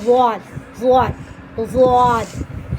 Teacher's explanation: ضاد زبان کی کروٹ اوپر کے داڑوں کی جڑ سے ادا ہوتا ہے نا. زبان کی کروٹ اور اوپر کے 5 داڑوں کی دائیں بائیں 5 داڑوں کی جڑ سے ادا ہوتا ہے.